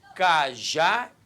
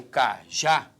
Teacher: Quando eu falo cajá, repare que a sílaba tônica é a última. Isso nos dá uma, vou escrever aqui, ó, uma oxítona.